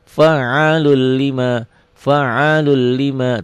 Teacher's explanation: Enggak ada dengungnya enggak ditahan